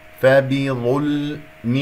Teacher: الباء مكسورة والظاء مفخمة مرتبة ثالثة